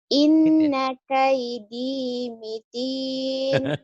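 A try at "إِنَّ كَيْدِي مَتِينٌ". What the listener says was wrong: Walaupun Ustaz kalau bilang salah mah jangan diikutin, masa mitin, ah, matin. Iya, inna kaidi matin, bukan mitin ya.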